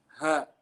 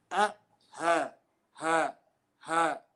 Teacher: the letters hamza and ha are pronounced by the larynx, which is the furthest part of the throat, without raising the root of the tongue or narrowing the air passageway. Okay, so there's no tension, no movement in the throat area.